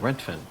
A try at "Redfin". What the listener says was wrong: But you're saying Rentfin. It's Red Fin.